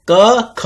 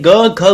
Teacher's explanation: कंठ मतलब होता है गला। तो जब आप क बोलते हैं, ग बोलते, ख बोलते हैं, ग बोलते हैं, घ बोलते हैं, ड बोलते हैं, तो आपके गले का यूज होता है